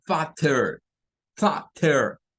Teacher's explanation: Es de las que en inglés norteamericano esa doble T no suena a T, porque los británicos lo dicen como fatter, fatter, haciendo sonar mucho la T. En cambio, los estadounidenses lo dicen como father, como es una R o D.